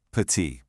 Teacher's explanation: that T is totally silent. The sound stops right at the vowel